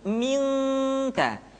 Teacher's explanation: Ketemu kaf maka dominan kepada huruf eng